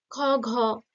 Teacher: খ ঘ কণ্ঠ জীব পিছনে চলে যাচ্ছে এটা কণ্ঠ হয়ে গেল